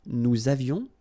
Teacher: little liaison, final S not pronounced